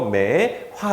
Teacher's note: 매호 더하기 아에서 오랑 아가 축약이 되어서 매화 이렇게 됐고요